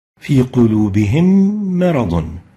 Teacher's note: merge the still meme, the first meme, sakina, with the second meme, the meme mutaharrika, producing a shadda and maintaining ghunna for 2 units · meme sakina followed by meme with fatha, both of them produce a meme with shadda. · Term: إدغام